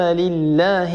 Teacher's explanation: ثم لام لله، لا يصح أن نقول لله، لابد من ترقيق اللام، لأن اللام هنا في لفظ لله سبق لفظ الجلالة بحرف مكسور